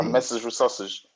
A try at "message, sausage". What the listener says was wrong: Okay, but there needs to be a little D sound. Message, sausage. I don't know if this is in both American or British only. But I know in British you have to, there's a bit of a stress. Village, so that you can always hear the D sound. Language, damage, sausage, luggage.